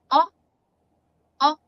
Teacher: You have your short vowel O. It sounds like O, O. Notice it's rounded. O. And when it's long, it's O.